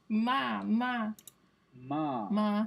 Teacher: It's an M sound, but with your teeth. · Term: labial dental